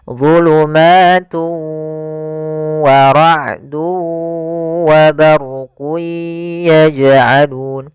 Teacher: Nah, yaitu idgham yang dia cara membacanya tanwinnya dimasukkan ke huruf waw dan ditahan gunnahnya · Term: idgham bi gunnah